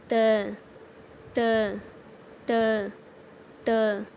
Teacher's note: மேல் பற்களின் வேர்களை நாக்கின் நுனியால் தொடணும்